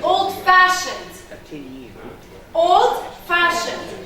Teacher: instead of stressing the first I am stressing that second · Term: compound adjectives